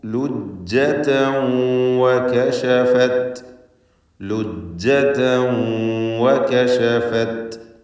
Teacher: താഇൻ്റെ ലുജ്ജതൻ എന്നതിലെ തൻവീൻ അതിന് ഇദ്ഗാം ബിഗുന്ന നാഖിസ് നൽകി വാവിൽ ലയിപ്പിച്ചുച്ചരിക്കണം. ലുജ്ജതൻ വ എന്നല്ല, ലുജ്ജതൻ വകശഫത് അൻ സാഖൈഹാ.